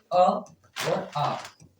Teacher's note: ऐसे स्वर जो कंठ से बोले जाते हैं वो दो वर्ण है आपके, जो दो स्वर हैं वो कौन से आपके अ और आ।